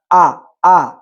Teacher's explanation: হামজার মাখরাজ হলো আকসল হালক, আকসল হালক থেকে হামজা হা উচ্চারিত হয় এবং হামজা উচ্চারণের সময় যখন হামজা হারাকা যুক্ত হবে তখন হামজা হরফটি মজবুত ভাবে আদায় হবে।